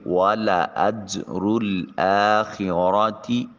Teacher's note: والا اجر الآخرۃ، حمزہ کے اوپر کھڑی زبر ہے آخرہ میں، اس کو الف المدیہ صغیرہ کہتے ہیں۔ خا کو حلق سے ادا کریں گے اور را کے اوپر زبر ہے، مفخم موٹا اور پر کر کے ادا کریں گے۔ تا کو بریک ادا کریں گے۔ · خی یا ساکن ما قبل مفتوح یا لین، نرمی سے ادا کریں گے۔ را کے اوپر تنوین اور اس کے بعد حروف یرملون میں سے لام، تو ادغام بلا غنہ ہوگا۔